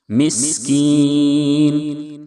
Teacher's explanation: سین کی ادائیگی میں سیٹی جیسی آواز نکلنی چاہیے